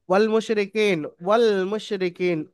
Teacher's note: খালি আলিফ বাদ যাবে লামের সঙ্গে ওয়াও যুক্ত হয়ে একসঙ্গে মিলিয়ে পড়বেন